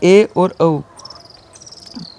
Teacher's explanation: वे स्वर जिनके उच्चारण में संवृत स्वरों की तुलना में मुख आधा बंद सा रहता है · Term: अर्ध संवृत स्वर